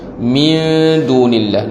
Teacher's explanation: nun mati bertemu dengan dal, hukumnya ikhfa hakiki